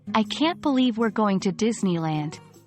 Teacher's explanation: a fast rhythm with rising intonation can express excitement.